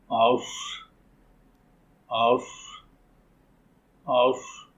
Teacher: صاد کو ادا کرتے وقت مخرج میں سیٹی کسی آواز پیدا ہو رہی ہے۔ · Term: صفیر